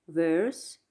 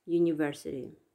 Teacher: er in verse is longer than in university